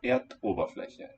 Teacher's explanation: It loses its final vowel. And Ober keeps its glottal stop.